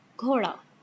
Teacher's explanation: Then g sound, this is stopped, voiced, aspirated.